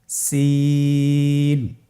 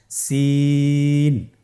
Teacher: জিহ্বার আগা সামনের নিচের দুই দাঁতের প্যাড ও আগার সঙ্গে লাগিয়ে উচ্চারিত হয়। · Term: সিনের মাখরাজ